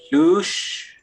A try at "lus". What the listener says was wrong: There's no wedge over there.